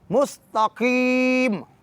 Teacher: قاف کو بولڈ پڑھنا ہے، موٹا پڑھنا ہے، نہ کہ تھن پڑھنا ہے